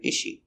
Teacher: So here, is she, we don't hear the S.